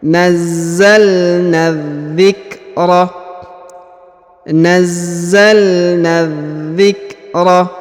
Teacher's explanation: Huruf na langsung sambung masuk ke huruf za yang bertasdid ya. Alif dan lamnya tidak dibaca. Yang ini tidak dibaca, ini tidak dibaca, ini tidak dibaca ya.